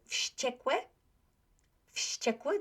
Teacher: Unvoiced influences the voiced one. They both become unvoiced.